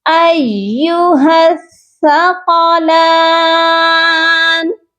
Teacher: ہا کو سا کے ساتھ ملائیں گے، اور درمیان میں الف اور لام نہیں پڑھے جائیں گے کیونکہ وہ دونوں ہی خالی ہیں۔